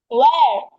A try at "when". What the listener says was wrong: ওয়েন baby, ওয়েন লাস্টে না আছে, ন। ওয়েন।